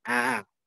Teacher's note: Hamzah keduanya jadi dia tidak jelas. Tidak jelas seperti hamzah tahqiq dan juga tidak jelas seperti fathah